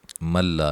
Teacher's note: نون ساکن کا یہاں ادغام ہے لیکن بلا غنہ ہے ، بغیر غنہ، ٹھیک ہے۔ یؤمنو حمزہ کو جھٹکے سے ادا